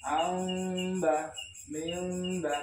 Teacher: kalau yang mim ketemu ba itu rapatnya ringan, tidak terlalu ditekan. Amba mimba, karena itu namanya ifa safawi ya.